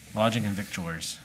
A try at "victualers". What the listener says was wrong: It's Vittel and Vittler. There, you don't pronounce the C and T, or the C anyway. It's Vittel and Vittler.